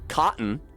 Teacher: I can obviously hear the glottal stop in cotton